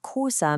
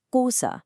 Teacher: a sharp, almost clicking sound you make in the back of your throat